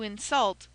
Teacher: But when we say he did it to insult another person, that word insult implies acting, and becomes a verb, and should be accented on the last syllable.